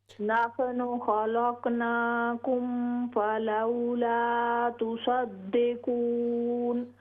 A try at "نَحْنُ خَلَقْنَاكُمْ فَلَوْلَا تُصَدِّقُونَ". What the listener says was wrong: ہاں جی آپ چھوٹے قاف اور بڑے قاف میں تھوڑا سا اور زیادہ فرق ہونا چاہیے.